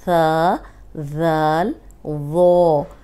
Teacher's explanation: اوپر سامنے والے بھی جو دانت ہیں ان کے اندرونی کنارے پہ زبان لگے گی تو یہ سیٹی کی آواز نہیں نکلے گی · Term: نرم حروف